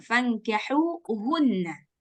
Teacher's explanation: Setelah H dari tengah lidah, kemudian H yang pangkal lidah.